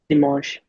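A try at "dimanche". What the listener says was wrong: डिमोंश, ठीक है, ई की कोई साउंड नहीं।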